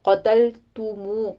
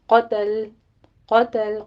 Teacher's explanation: قوف پر تا باریک ہے، لام بھی باریک ہے، آگے تا کے پر ضمہ ہے، ہونٹ گول کر لیجئے۔